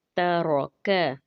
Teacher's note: ता बारीक पढ़ा जाएगा, रॉ के ऊपर फतहा है, रॉ पुर पढ़ा जाएगा यानी कि मोटा अदा होगा, और काफ बारीक हरूफ में से है, लेकिन काफ का मखरिज जो है तालु का सख्त हिस्सा है वहाँ से अदा होगा